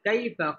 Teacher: কাই জবরের বাম পাশে জাজম ওয়ালা ইয়া লিনের হরফ তাড়াতাড়ি পড়তে হবে